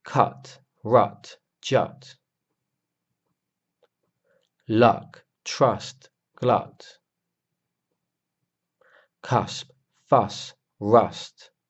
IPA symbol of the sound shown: ʌ